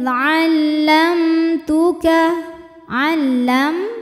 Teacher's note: waidzamtuka alam di sini ada hukum tajwid namanya izhar syafawi sebab ada mim sukun yang menghadapi huruf selain mim dan ba hurufnya ta ya maka mim sukun dibunyikan dengan izhar atau jelas